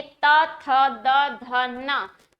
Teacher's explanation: और जब आप बोलेंगे त थ द ध न, तो आप पाएंगे कि आपकी जीभ जो है ना, वो आपकी जीवा दांतों को स्पर्श कर रही है, ऊपर वाले दांतों को स्पर्श कर रही है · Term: दंतव्य वर्ण